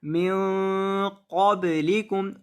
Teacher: नून की आवाज़ को नाक में गुनगुना कर पढ़ना, तो यहाँ नून की आवाज़ को नाक में गुनगुना कर पढ़ेंगे। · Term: गुन्ना